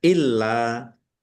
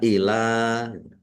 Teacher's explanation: lamnya dibaca dobel ada tasdidnya ditekan dan ditahan